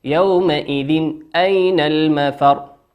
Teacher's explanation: تنوين أتى بعده حرف الهمزة، والهمزة من حروف الإظهار تظهر